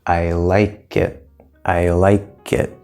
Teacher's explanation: so it actually sounds like the K moves over and we get like ly KITT like it like it that's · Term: moving sounds